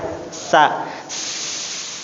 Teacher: sa gigi atas dengan bawah dirapatkan, nanti keluar angin dari tengahnya, berdesis. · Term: huruf sa